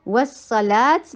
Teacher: اینڈ کرتے ہیں تو اس کو سکون دیتے ہیں سکون دیتے ہی یہ تا ہاں میں چینج ہو جاتی ہے